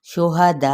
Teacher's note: تو 4 حرکات کے برابر، ٹھیک ہے، شہداء، اینڈ پہ یعنی ایک حمزہ ساکن ہوتا ہے تو ہلکا سا جھٹکا دیں گے، بہت لائٹ سا ، ٹھیک ہے، یعنی بہت کھینچ کے ایک دم سے جھٹکا